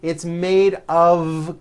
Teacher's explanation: it's not a wood with an unvoiced F it's all voiced and it's all connected